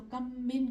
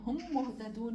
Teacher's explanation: ان دو میم کو ملا کر ایک بنا کر ہم تشدید دے کر پڑھیں گے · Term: ادغام